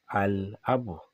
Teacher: If we have alif wa lam followed by any of huruf al-qamariyya, this lam will be pronounced explicitly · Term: lam al-qamariyya